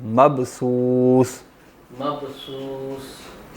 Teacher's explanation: با جو ہے وہ یہاں کلکلا بھی ہوگا